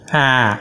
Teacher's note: it's an open front vowel sound